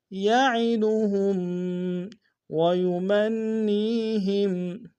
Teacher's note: ويمن میں نون مشدد ہے، غنہ کریں گے، اور یا مدہ ہے۔